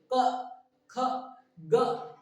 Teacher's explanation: इसमें देखो प फ ब भ और ये हो जाता है म तो देखो हम पूरा लिख दिए ये जितने भी वर्ग है पूरा लिख दिए तो सर अब इसको क्यों लिखे तो इसको इसीलिए लिखे की जितना भी क वर्ग है वो हमारे कंठ से निकलता है जितने भी क वर्ग के व्यंजन है उसको जब हम उच्चारण करते हैं उसका जब हम उच्चारण करते हैं तो कंठ से निकलता है